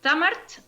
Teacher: entre la R y la T no existe vocal.